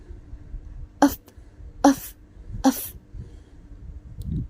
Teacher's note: Voiceless is the lower lip likely touch the upper teeth and the air is pushed through the narrow opening, creating friction and without vibration of the vocal cords